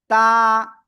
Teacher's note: জিহ্বার আগা সামনের উপরে 2 দাঁতের গোড়ায় লাগিয়ে এই অক্ষরটা উচ্চারণ হয় তা